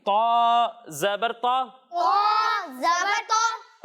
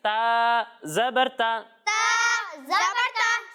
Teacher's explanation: जब हम तौ की अदायगी करेंगे तो इसे मोटा पढ़ेंगे, क्योंकि तौ भी हुरूफ मुस्ताड़िया में से है, और जब हम ता की अदायगी करेंगे तो इसे बारीक पढ़ेंगे।